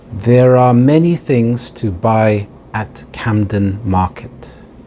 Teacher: You also pronounce the R with the linking R when the next word begins with a vowel.